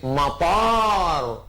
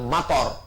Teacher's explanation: Pakai alif, matar, airport. Tapi kalau pendek bacanya, ilal matar, hujan.